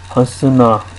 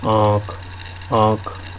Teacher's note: नाक से और मुंह से दोनों से आवाज आ रही है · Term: चंद्र बिंदु